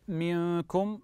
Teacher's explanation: منكم نون ساكنه اتى بعدها حرف الكاف فهذا احسنتم كذلك اخفاء